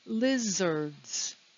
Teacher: It's two syllables. The stress is on the first syllable. Notice that we don't hear the letter A.